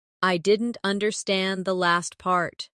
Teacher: Stress last part to focus the listener's attention.